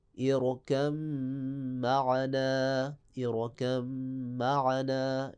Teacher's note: یعنی کہ با کو میم میں آپ ادغام کر دیں گے